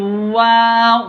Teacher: वाव, वाव पहली, वाव जो है ना, ये दोनों होठों को नरमी से मिला के पढ़ना है। वाव में दोनों होठ जो है ना आपस में मुकम्मल तौर पे नहीं मिलते, और दांतों को होंठ नहीं लगने देना